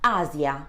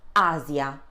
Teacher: When in between two vowels and normally in the middle of a word, then the sound is a bit more delicate as the S sound in rise.